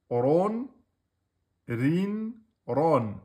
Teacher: Quand on passe au Tanwin, on a Ron, Rin, Ron. Donc Ron emphatique, Rin aminci et Ron emphatique.